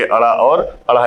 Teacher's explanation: हमारी जीवा ऊपर की तरफ उठकर मूर्धा के पास जाकर झटके के साथ नीचे वापस आती है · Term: द्विस्पर्शी व्यंजन